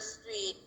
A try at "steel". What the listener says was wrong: Steel, not street, steel.